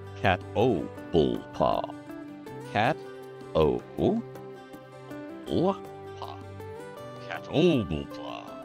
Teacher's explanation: But sages will tell you, and the critters themselves will tell you, if they were talking to you without trying to kill you first, their name is pronounced Catoblepa. Four syllables. Second syllable is the emphasis.